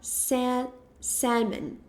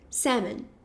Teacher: O L ele é completamente silencioso.